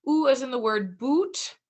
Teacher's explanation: is most closed of the back vowels. The tongue is retracted